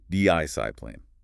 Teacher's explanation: The stress, the emphasis is clearly on the first syllable. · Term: first syllable stress